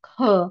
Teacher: एक क सॉफ्ट म्हणतो की ख असं हवा येऊन त्याच्यातला ह उच्चार होतो. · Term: महाप्राण वर्णाचा